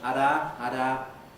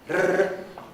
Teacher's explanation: Spanish is famous for having a difference between one vibration and several vibrations. Rrr, two or more vibrations is a trill.